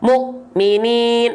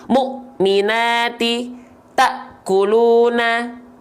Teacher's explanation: Huruf-huruf yang bertemu dengan hamzah sukun itu terhentakan.